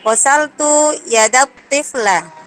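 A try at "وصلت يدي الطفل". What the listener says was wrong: Bukan yada itu. Yadayit tifli. Wasaltu yadayit tifli.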